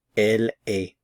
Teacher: I'm not pronouncing the consonants at the end of the verb form